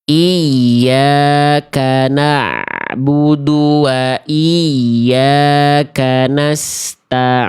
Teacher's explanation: ain yang kedua ngirung sengau masuk ke hidung.